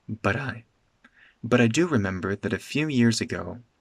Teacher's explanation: these words are connected together. With a tapped T.